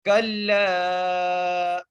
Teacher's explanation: لام کو ہم کھینچ کے پڑھیں گے، تین الف کی مقدار کھینچ کے پڑھیں گے. کلا، پہلے تو کاف کو لام سے ملائیں گے تشدید کی وجہ سے اور پھر لام کو تین الف کی مقدار کھینچ کے پڑھیں گے.